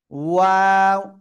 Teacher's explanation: দুই ঠোঁট গোল করব, গোল করে আবার দুই দিকে প্রসারিত করব, আবার শেষে এসে গোল করব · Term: ওয়াও অক্ষরটা